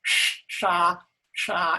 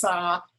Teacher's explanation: The S is a retroflex S, which means you make it by taking the tip of your tongue and pointing it straight up at the roof of your mouth.